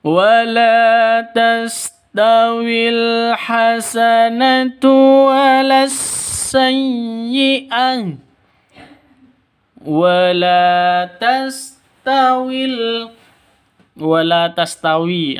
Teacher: Awalnya panjang ya. Wala panjang dua ketukan.